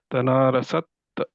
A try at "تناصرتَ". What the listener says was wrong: یہاں کا سین اور وہ صاد دونوں مکس ہو رہے ہیں نا، مل جل رہے ہیں.